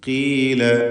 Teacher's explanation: فلما جاءت قيل أهكذا قيل ഖാഫ് ഇസ്തിഅലാൻ്റെ അക്ഷരമാണെന്ന് നാം മനസ്സിലാക്കി. എന്നാൽ കസ്റായതുകൊണ്ട് ഏറ്റവും കുറഞ്ഞ തഫ്ഖീം കൊടുത്ത് ഉച്ചരിക്കുക.